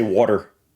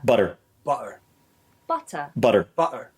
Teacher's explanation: middle of a word mostly when it starts the final syllable it becomes a glottalized t